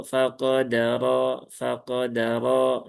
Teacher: fanya tipis qofnya tebal atau tafhim ya qo tapi tidak perlu sampai berlebihan menjadi qo qo ya faqodar ya begitu enggak enggak sampai enggak sampai seperti itu ya cukup naikkan saja A pangkal lidahnya dengan normal.